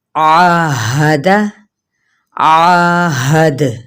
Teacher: جب دال پہ وقف کریں گے تو وہ قلقلے کی صورت میں ہوگا